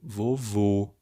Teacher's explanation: o som forte, a tônica é no último vô, e é um som fechado, vovô. Aí eu tenho que marcar com acento circunflexo.